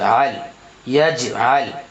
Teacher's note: تو یہاں جیم میں قلقلہ ہوگا کیونکہ جیم کے اوپر جزم ہے اور جیم حرف قلقلہ میں سے آ رہا ہے اس لیے یہاں قلقلہ ہوگا۔